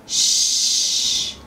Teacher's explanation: Another one of those blowing sounds is the sh sound. The lips are forward for this sound. Shh. Another blowing sound is the s sound, which is made with the teeth together.